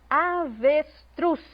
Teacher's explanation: Avestruz, truz foi o que eu pronunciei com mais ênfase.